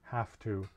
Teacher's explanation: when i say have to i'm usually saying half with an f sound have to uh not everyone does that but i i certainly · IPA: /v/